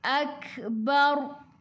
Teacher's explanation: Kaf tu kena ada angin sikit sahaja. Akbar. Bar sebelum huruf ra ada bari atas, bila berhenti kena baca tebal, lidah naik ke atas.